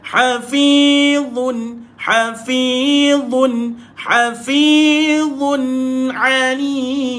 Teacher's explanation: Mulut kita bulat, lidah kita keluar, sentuh dekat bawah gigi atas.